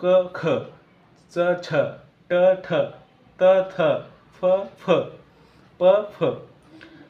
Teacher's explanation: पासून काय ख मित्रांनो क च ट त प या यामध्ये ख छ ठ थ फ यामध्ये थोडासे ह ची छटा आहे